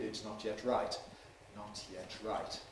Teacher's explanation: in my lecturing style, you can hear all the /t/s exploded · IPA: ɪts ˈnɒt jet ˈraɪt